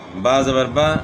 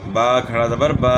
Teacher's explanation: پڑا زبر اس کو نہیں کھینچیں گے، کھڑا زبر جو ہے نا اس کو تھوڑا سا کھینچیں گے